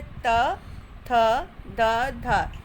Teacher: दंतय यानी दांतों से जब टकराती है वायु